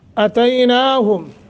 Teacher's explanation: तय हरूफ लीन में से है, नरमी के साथ थोड़ा लंबा करना है